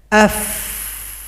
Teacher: sakata huruf pertama Fa Coba kita sukunkan nanti terasa anginnya AF maka bunyi F itu adalah Hamas suara ada angin